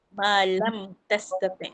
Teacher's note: Maksudnya nyata bunyi mim tu. Nyata bunyi mim pada bibir. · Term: izhar syafawi